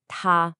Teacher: it's a high flat first tone